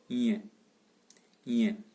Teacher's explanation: Nasal, palatal, et sonore.